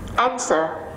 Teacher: Answer là động từ đấy, lại rơi vào âm 1.